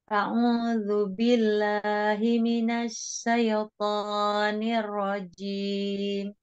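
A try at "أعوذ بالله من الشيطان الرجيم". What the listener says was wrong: Shin. Minasyaiton. Dengan shin ya, jangan sin. Syaiton.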